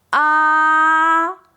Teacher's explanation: That long, high, steady ah is exactly what the first tone sounds like. It's high, it's flat, and it doesn't go up or down at all, just like holding a high note in English. · That long high steady “ahhhh” is exactly what the first tone sounds like